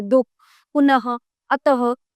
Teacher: विसर्ग इसका उच्चारण आधे है की भांति होता है